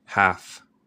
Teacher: El L es muda en half.